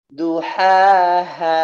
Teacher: Ketika dia berada di akhir, ya, maka dipanjangkan sampai tidak ada batasnya di sana. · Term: mad tabi'i